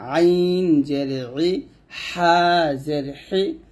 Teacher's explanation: আইন হা, এই 2টি হরফ গলার মাঝখান থেকে চাপ দিয়ে